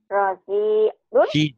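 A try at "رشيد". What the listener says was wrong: Ini shinnya nih. Shin. Shinnya ya, latihan ya.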